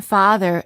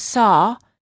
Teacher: In contrast to the ah and the aw sounds, as in father and saw, require the mouth to be open. Ah and aw are very similar sounds, except for the aw, the lips are a little bit more oval in shape and the tongue is slightly tense.